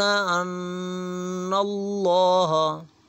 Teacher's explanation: نون مشدد ہے تو یہاں پہ ہم غنہ کریں گے